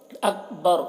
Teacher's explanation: اکبر کے کاف میں قلقلہ نہ ہونے پائے، اس کا خیال رکھنا ہے اور یہاں پر وقف کریں گے تو را کو پر پڑھیں گے.